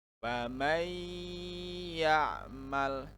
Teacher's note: Ini adalah hukum bacaan idgham bigunah yang harus didengungkan.